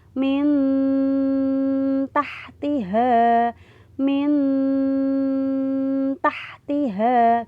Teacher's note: nun sukun ketemu ta. Nah, cara bacanya agak samar. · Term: ikhfa hakiki